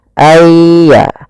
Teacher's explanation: ini ke huruf setelahnya kalau di sini hurufnya adalah ya maka masukkan nunnya kepada ya Sehingga nunnya hilang tinggal ynya Aya langsung ditasdidkan dia seakan-akan ynya dua yaitu Ya Sukun dan